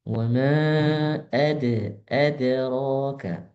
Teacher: Hati-hati a-nya jangan sampai tebal.